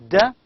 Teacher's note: D, an alveolar stop voiced sound